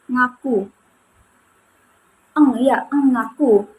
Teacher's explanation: kata ngaku ini atau konsonan eng ini termasuk dalam proses nasal karena ketika diucapkan udara itu keluar melalui hidung begitu. Nah, kemudian kata ngaku dari konsonan eng ini termasuk dalam kata bersuara karena dia ini memiliki getaran kayak eng begitu.